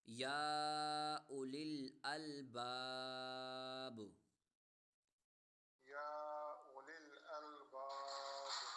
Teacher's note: اب وقف میں با جو ہے ساکن ہو جائے گی، با حرف قلقلہ ساکن ہو جائے گا، یعنی یہاں پر با حرف قلقلہ والا آ رہا ہے تو اسے یہاں پر حرف قلقلہ ہوگا.